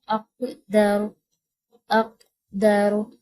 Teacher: اب کاف پہ تھوڑا سا ہم نے اس کی آواز کو تھوڑا گونج کے ساتھ پڑھا، تھوڑا سا جھٹکا سا دیا ہم نے اس پہ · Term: قلقلہ